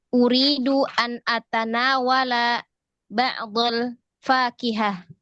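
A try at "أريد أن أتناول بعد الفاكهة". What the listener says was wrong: Ya, jangan diputus-putus. Sambung aja.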